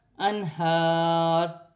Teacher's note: ہا پر کھڑی زبر ہے، ایک الف کی مقدار کھینچ کر پڑھا جائے گا